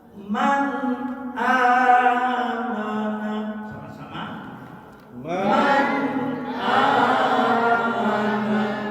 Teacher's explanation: izhar ini dinamakan izhar halqi, dibaca jelas di permukaan tenggorokan. Bertemu hamzah, kita baca bersama-sama.